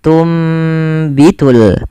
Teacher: suara nunnya dirubah dan diganti dibalikkan menjadi suara huruf mim. Maka awalnya tunbitu dan ditanda di sini dengan mim kecil agar mim kecilnya mengganti posisi nun. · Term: iqlab